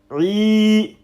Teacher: So you're going to stretch this ain with a kasra.